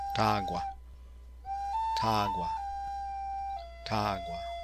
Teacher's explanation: This is a diphthong, having GW as one sound